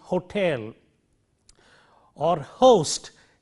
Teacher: a lot of breath force is required to produce friction here at the glottis